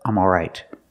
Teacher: The sound is back here, ah, ah, all right. Some people don't pronounce the L, but they keep the same vowel, ah, not O, but ah. If we eliminate the L, it sounds like this, ah, all right, all right. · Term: vowel aw